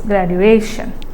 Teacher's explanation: So the stress is on the syllable before the suffix